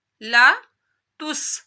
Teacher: سین کی سیٹی نکالنی ہے